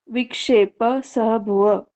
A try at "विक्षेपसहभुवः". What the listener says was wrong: हा का उच्चारण भी करना, सह भुव।